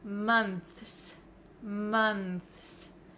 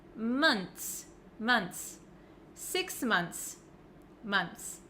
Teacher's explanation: it looks like there's just a TS at the end I don't pronounce the h